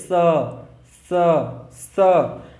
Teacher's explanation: सपेरा वाला स जो है वो दंत से, जो आपकी जुबान होती है वो दांत के पास टकराती है, स स, ठीक है, इसको बोला जाता है दंत।